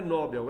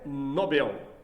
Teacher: A sílaba tônica é o bel, não é o nó.